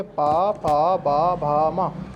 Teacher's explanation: ठीक है, अब आते हैं यहाँ पर दोनों होठों से, यानी कि ओष्ठीय, ओष्ठीय यानी कि यहाँ पर दोनों होठों से बोले जाने वाले व्यंजन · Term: ओष्ठीय व्यंजन